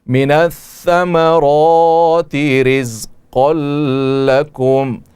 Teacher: ہم وقف کر سکتے ہیں اور کریں گے کہ یہاں پر میم میں اظہار ہوگا، اخفا نہیں ہوگی، غنہ نہیں ہوگا ، اظہار کے ساتھ اس میم کو پڑھا جائے گا۔ من